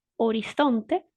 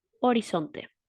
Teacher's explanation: la única diferencia es que uno es interdental y el otro es alveolar